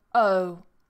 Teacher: may hear them instead of saying oh they may say oh so it changes from an uh to an o that starting vowel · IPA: əʊ